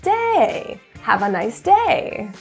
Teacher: stress a different word like day you can do that too keep an eye on going up and down the wave is happening on the same syllable day